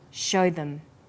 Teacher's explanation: show is stressed and them is unstressed so we say show them this is vowel and consonant linking